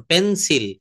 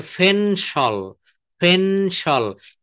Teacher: এই পিটাকে ফ বলতে হবে, পিটাকে ফ বলতে হবে।